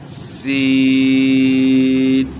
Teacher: سین میں ایک سیٹی کی مثل آواز بھی پیدا ہوتی ہے